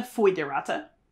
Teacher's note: That OE usually is pronounced as a OI sound in our version of classical pronunciation now.